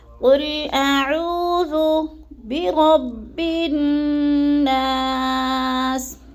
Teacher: عین کو حلق کے درمیانے حصے سے ہم نے ادا کرنا ہے، اور عو کو تھوڑا سا لمبا کرنا ہے، اس لیے کہ ادھر وہ مد آ رہا ہے، جیسے قل اعوذ برب الناس۔